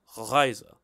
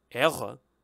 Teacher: this sound is the usual uvular trill, like Reise